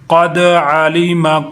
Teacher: قاف موٹا کریں گے، دال کو ہلا کے پڑھیں گے، دال کے اوپر قلقلہ کریں گے